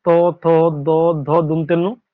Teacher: প্রত্যেকে উচ্চারণ করো ত বর্গের এই বর্ণগুলো, ত, থ, দ, ধ, দন্তেন্ন, তোমাদের জিহার যে সামনের দিকটা দাঁতে অবশ্যই স্পর্শ করবে, এই জন্য এটাকে দন্ত বর্ণ বলা হয়